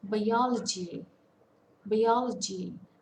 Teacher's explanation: the stress falls on the second syllable it's a four-syllable word